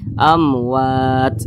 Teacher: wa bukan huruf mim bukan huruf ba maka hukumnya izhar syafawi dibaca jelas tidak berdengung jadi dibaca pendek saja